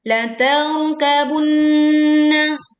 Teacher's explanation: La tarkabunna, nun bertasydid dibaca dengung sempurna.